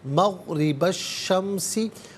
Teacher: मग़रिबा में बा पर ज़बर से अश-शम्सी के शीन के साथ मिलाएंगे। दरमियान में सलीफ़ यानी हमज़ा को हज़फ़ किया जाएगा। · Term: हरफ़ शमसिया